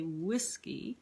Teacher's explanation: That's a trochee. We put the stress on the beginning, on the first syllable.